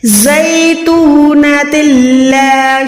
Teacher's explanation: تنوین کو ادا نہ کریں بلکہ یہاں پر تا کو لام کے ساتھ ملائیں بغیر گننے کے، یہاں پر ادغام ہے بغیر گننے والا۔